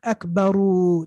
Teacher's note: they stretched the vowel at the end